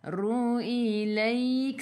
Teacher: Ra baris depan kena baca dengan tebal. Ru ilaik. Sebelum huruf akhir ada ya yang ada baris sukun mad lin.